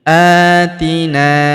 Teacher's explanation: Huruf na kita panjangkan dua harakat karena terdapat alif di depannya.